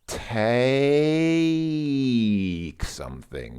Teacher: There's a transition there. It's very clearly not just one sound. This vowel is not making one sound. It's two sounds. It goes from A to E.